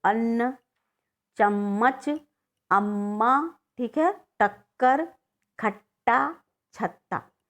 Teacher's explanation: जब हम बोलते हैं इसको, एक ही जैसा दो व्यंजन होगा, जैसे डबल ना होगा, दोहराकर च होगा, दोहराकर क होगा, दोहराकर ट होगा और दोहराकर ता होगा, ठीक है। तो इसमें जो पहला वाला होगा वह व्यंजन, उसमें स्वर नहीं मिला रहता, लेकिन दूसरे वाले में जो है वो स्वर मिला रहता है · देखिए अन्न में अ बोले आधा ना फिर पूरा ना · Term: द्वित्व व्यंजन